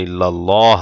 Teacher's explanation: আল্লাহ শব্দ ল করে পড়তে হবে অর্থাৎ মোটা করে পড়তে হবে